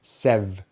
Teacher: So seventh has two syllables, stress on the first syllable, which starts with the S, and then we have the short vowel sound e, as in pet, which we make by pushing the tongue forward just a little bit and spreading the lips. And then that syllable finishes on the V sound, the V sound.